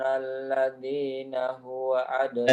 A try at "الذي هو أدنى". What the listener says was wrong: الذي هو bukan alladzina, alladzi huwa.